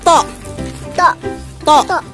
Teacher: kalau bilang tok ketika Fatah jangan monyong ya · pertemuan antara permukaan ujung lidah dengan pangkal gusi gigi seri atas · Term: huruf Tho, huruf to